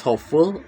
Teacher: The root word is hope and the suffix is full. The stress is on the first syllable hope and the full does not shift stress. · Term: stress-preserving suffix